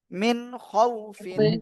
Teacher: নুন সাকিনের পরে ইজারের অক্ষর খ আসছে আমরা স্পষ্ট করে পড়বো